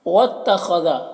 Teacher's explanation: واتخذ، یہاں پر خا حروف مستعلیہ میں سے ہے تو اسے پر پڑھنا ہے